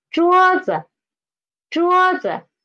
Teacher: this neutral tone is after our first tone, so we should read it. The pitch should be lower, the lower.